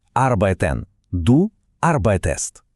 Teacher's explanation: Якщо основа дієслова закінчується на т або д, от як у слові арбайтен, основа арбайт, то вимовити арбайтст було б просто каторгою. Тому німці для милозвучності вставляють між основою і закінченням с таку собі рятівну голосну е